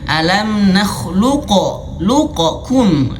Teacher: tetap dihadirkan huruf qofnya namun tidak perlu diqalqalahkan